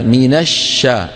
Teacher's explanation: الشين فيها رخاوة يعني جريان الصوت، فيها همس. حط يدك هنا قول ما تجد تحت يدك اهتزاز.